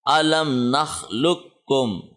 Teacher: یہ قاف بائی پاس ہو گیا اور اس کاف کے ساتھ لام کو کنیکٹ کر دیا